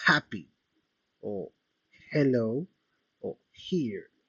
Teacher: Se producen en la glotis, es decir, en la zona de las cuerdas vocales. Aquí encontramos como ejemplo la letra H, como por ejemplo las palabras happy o hello o here. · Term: sonidos glotales